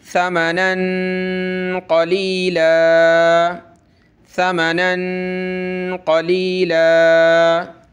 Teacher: بآیاتی ثمنا قلیلا، یہ تنوین ہے، یہ تنوین ہے، دو زیر بھی تنوین ہوتی ہے، دو زبر بھی تنوین ہوتی ہے، اور دو زبر کی جو یہاں تنوین ہے، یہاں ہم نے تنوین کا اخفا کرنا ہے۔ اخفا یعنی ناک میں آواز پیدا کریں گے